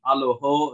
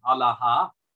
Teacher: the O vowel at the end would have been pronounced ah so instead of aloho it would have been Allah um in